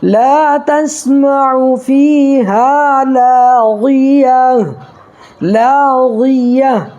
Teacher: دیکھیے یہاں الف ہے، الف سے پہلے لام کے اوپر زبر ہے تو الف مدہ ہوگا، ایک الف برابر کھینچ کر کے پڑھیں گے. ٹھیک ہے، اور یہاں یا ساکن سے پہلے فاگ نیچے زیر ہے تو یہاں بھی یا مدہ ہوگا، اس کو بھی ایک الف برابر کھینچ کر کے پڑھیں گے.